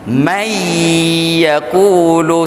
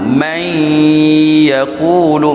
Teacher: idgham maal ghunnah dia masuk tidak sempurna bagi ya dan wau dia masuk sipi-sipi